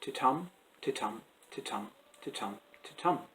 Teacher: there's an unstressed beat followed by a stressed beat. So the rhythm kind of goes ti-tum, ti-tum, ti-tum, ti-tum, ti-tum. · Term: Iambic Pentameter